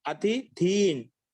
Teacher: అతి అనేది మొట్టమొదటి అల్పప్రాణం, రెండవది మహాప్రాణం.